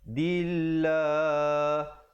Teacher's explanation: Dillah, lafzul jalalah iaitu perkataan Allah datang sebelumnya baris kasrah, dibaca nipis. Dillah, dan dipanjangkan 2 harakat.